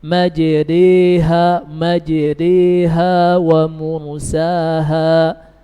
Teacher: Lisannya harus tafkhim, artinya punggung lidahnya naik ke langit-langit atas.